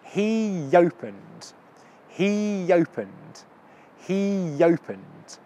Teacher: he opened so you got the two sounds e oh right it ends in an e so the next sound will start with a Y sound